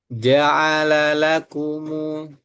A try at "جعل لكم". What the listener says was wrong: Jangan masuk hidung. Masuk hidung. Mu, mu, mu, mu, u, mu. Bunyinya seperti u.